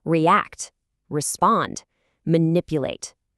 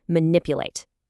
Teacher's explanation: Notice how manipulate has four syllables, right? But that heavy stress falls right on that second syllable, nip. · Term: syllable stress